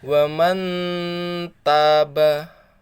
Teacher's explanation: ditahan ya selama 1,5 alif atau 3 ketukan